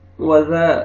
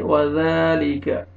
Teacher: जाल को नरमी से अदा करना है, काफ को बारीक पढ़ेंगे